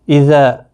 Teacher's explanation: ایک الف کے برابر کھینچ کر پڑھیں گے، الف مدہ بنتا ہے